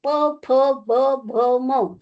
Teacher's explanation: आणि प वर्ग जो आहे, प फ ब भ म, आपल्याला बोलतानाच कळलं की प वर्ग हा ओष्ठ्य, ओठांचा वापर केला जातो